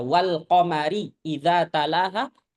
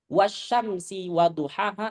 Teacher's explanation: baca walqamari idza talaha itu lamnya dibaca izhar. Wasyamsi waduhaha itu lamnya dibaca idgham. · Atau mungkin begini, orang Arab kalau menyebut kata al-qamar, maka lamnya pasti dibaca jelas tanpa mereka tahu bahwa ini hukumnya qamariyah atau syamsiyah. Kalau nyebut asyamsi, wasyamsi itu pasti alif lamnya nggak dibaca kan? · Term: idgham syamsi